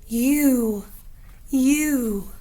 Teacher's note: my tongue is lifted high in the back of my mouth my voice box is on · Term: long u sound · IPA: /yu/